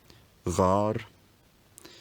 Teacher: The diphthong smooths to a long monophthong